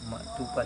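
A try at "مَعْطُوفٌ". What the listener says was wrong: Maktufun. Nggak boleh baca maktufan tulisannya begitu, nggak ada alifnya. Maktufun, maktufin. Dua kemungkinannya.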